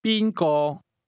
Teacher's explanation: The tones in who or whom go from the high level to the mid level.